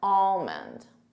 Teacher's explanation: And the emphasis is on that all, almond.